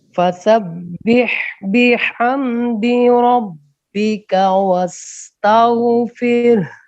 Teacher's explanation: فسبح بحمدی، دال کو لمبا نہیں کرنا. بحمدی ربک، دال کی زیر اور ربکا کے کاف کی زبر کی مقدار ایک جیسی ہے